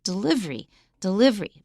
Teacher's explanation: delivery has four syllables but we often just say it as three